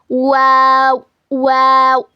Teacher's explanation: दोनों होठों को गोल करने से और ना मिलाने से वाव अदा होता है। It is pronounced by making your lips round, both the lips do not meet.